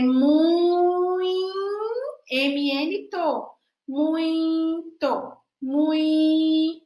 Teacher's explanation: Põe um M ou um N depois do I, porque muito. Esse I próximo ao M gera uma nasalidade.